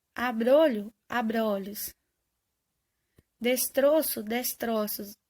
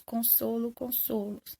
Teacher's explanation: para formar o plural, necessito de mudar de timbre de O fechado para O aberto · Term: metafonia